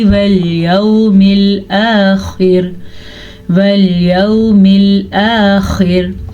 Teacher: خوا کو پر پڑھیں گے، را کو باریک پڑھیں گے